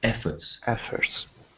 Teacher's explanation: When we say this word, we put the stress at the beginning, quite squarely at the beginning, so efforts, not efforts, but efforts.